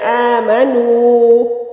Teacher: آمنوا، واو ساکن سے پہلے لفظ کے اوپر پیش ہے تو یہ واو مدہ ہے، اور واو مدہ کو کھینچنے کی جو مقدار ہے وہ ایک حرکت کے برابر ہے۔ والذین آمنوا، نہ ہی زیادہ کھینچنا ہے نہ ہی بہت کم۔